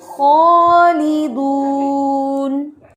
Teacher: خا نہیں پڑھنا، خو ہے، استعلا ہے